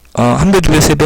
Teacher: 한 배, 두 배, 세 배 하는 이 배가 길고요